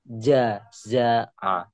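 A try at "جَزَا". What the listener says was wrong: Masih jajaa ya. Ya, ya beda ya. Jaza jaza jaza. Bedakan antara jim dan zai. Jaza pajaza. Jangan pajaja kan nama orang jaja. Ini jaza. Jaza.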